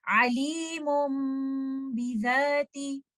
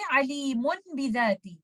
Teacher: I will change letter noon sakina hidden in tanween into letter meme, and also I will hold the gunna of letter meme for some time